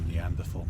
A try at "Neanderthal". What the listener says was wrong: You're doing so good, and then they said Neanderthal. I'm pretty sure it's pronounced Neanderthal, like you don't really enunciate the H.